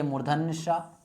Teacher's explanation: और सा का मतलब हो गया ये मूर्धन्य सा। इसका उच्चारण स्थान क्या है? इसका उच्चारण स्थान मूर्धा है।